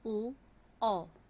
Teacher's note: कंठोष्ठ्य गले तथा होंठ से